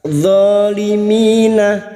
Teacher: mi kasrah disusul ya sukun kita perpanjang dua harakat